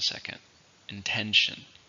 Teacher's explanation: How many syllables are in intention? 3, stress on the second,